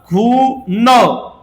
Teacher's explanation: न म्हणत असतानी न जिभेचा शेंडा वरच्या दाताच्या पाठीमागच्या बाजू लागतो